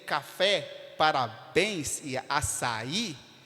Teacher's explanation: a palavra tem tonicidade na última sílaba é o que nós chamamos de oxítona · Café está em fé, parabéns está em bens, e açaí está no i, na última sílaba. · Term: oxítonas